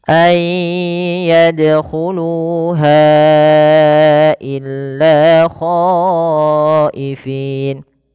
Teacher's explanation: Nah, ini sama seperti ulaika, yaitu bacaan mad wajib muttasil, maka khonya wajib dipanjangkan 4 harokat atau 5 harokat